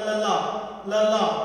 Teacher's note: ਜੀਭ ਦੀ ਨੋਕ ਆ ਉਹ ਸਖਤ ਤਾਲ ਨਾਲ ਲੱਗਦੀ ਆ ਪੁੱਠੇ ਹੋ ਕੇ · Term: ਉਲਟ ਜਿਹੀ ਧੁਨੀ